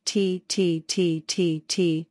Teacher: prolong the T sound then blow through it producing a hiss of air